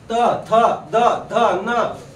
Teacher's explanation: बघा जीभ दातालाच लागते, जिभेचा अग्रभाग. जिभे दाताला नाही लावली तर यांचे उच्चारण होणार नाही. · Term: दंतवर्ण